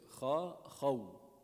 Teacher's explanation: You round for the waw, not for the kha.